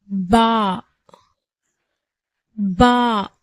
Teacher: பாவுடைய பிறப்பிடம் 2 உதடுகளின் ஈரப்பகுதியிலிருந்து பிறக்கப்படுகிறது